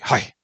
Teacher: starts with a glottal fricative H of Hi. Ends with a dip thong.